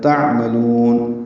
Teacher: عین ساکن پہ اظہار ہے، لام کو لمبا کریں گے